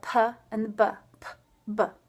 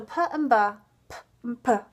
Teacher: these are both made at the same place in the same manner uh the only difference is voicing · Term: cognate pairs